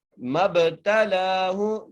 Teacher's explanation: میم کو با سے ملانا ہے اور با پہ قلقلہ کرنا ہے. مَبْتَلَاهُ، لام کو ایک الف مقدار کھینچ کے پڑھنا ہے.